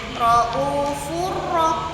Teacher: Habis bunyi nun atau tanwinnya langsung masuk ke huruf ro secara sempurna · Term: idgam kamil